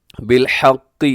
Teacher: وتواصوا، وتواصوا بالحق، بالحق، اس میں قاف موٹا رکھیے گا، اگرچہ اس کے نیچے زیر ہے، ہا کا خیال رکھیے، اسے حق کی پڑھنا درست نہیں ہے۔